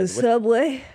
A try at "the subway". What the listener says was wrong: You just said that in a British accent.